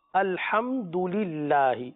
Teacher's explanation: الحمدللہ اللہ عز و جل کا لام باریک پڑھیں گے